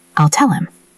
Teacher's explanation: It sounds like one word. If you are listening for the H, you will miss it.